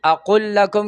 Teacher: لام په لام کې ادغام مثلین شو، د دو لامونو په ځای به یو لام شي